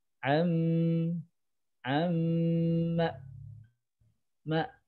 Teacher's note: am Amma Ma Nah di sini bunyi Mim hanya sedikit ya di ketukan ketiga bunyi mim hanya sedikit yang dominannya bunyi a fathah